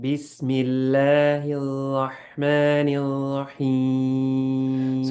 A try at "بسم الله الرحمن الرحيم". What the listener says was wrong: ra is mufakham, it's heavy. So making sure we say rah, rah, rah. Make sure there's no dhamma sound in your ra, okay? Like your tongue should just go up for making it heavy. Sometimes what happens is we make it round. The sound of dhamma comes in. So rah, rah.